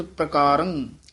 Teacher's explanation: ਇਸ ਤਰਹਾਂ ਥੋੜਾ ਤੇਜ਼ੀ ਨਾਲ ਬੋਲਾਂਗੇ ਤਾਂ ਪ੍ਰ ਬੋਲਿਆ ਜਾਏਗਾ ਨਹੀਂ ਤਾਂ ਪਰਕਾਰੰ ਰਰਾ ਪੂਰਾ ਬੋਲ ਜਾਏਗਾ